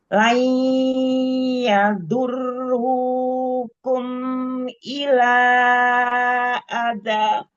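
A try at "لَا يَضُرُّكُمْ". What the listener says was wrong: Ru jangan terlalu panjang matobi'inya. Terus idhar syafawi, mim sukunnya jangan ditambah gunahnya. Jangan dipanjangkan lagi gunahnya.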